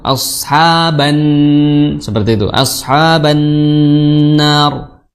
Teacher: ba langsung masuk ke nun karena nun memiliki tasdid